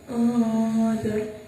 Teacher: Di situ ada nun mati bertemu dengan huruf zo, maka cara bacanya samar. Nun mati atau tanwinnya dibaca tebal dan membacanya setelah alif atau 2 harokat. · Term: ikhfa a'la